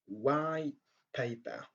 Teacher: on ne prononce pas le son t à la fin du mot, du premier mot